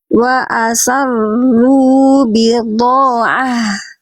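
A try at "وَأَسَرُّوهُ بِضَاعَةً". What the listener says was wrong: Nah, hu-nya tapi hilang. Mana hu-nya? Tadi rubi. H-nya ini nggak kebaca.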